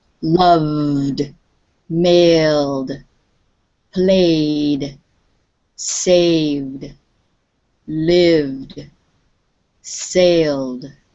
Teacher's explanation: when you say these words the sound at the end is a voiced sound